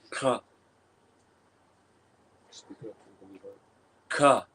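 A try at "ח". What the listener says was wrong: A little more. I don't want to say a little bit more phlegm. A little more maybe back of the throat. Because you're not saying K, you're not saying ka, but you're also not just gurgling while you're saying.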